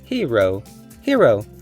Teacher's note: the first syllable is open with a long vowel he, and the second syllable is open with the long vowel ro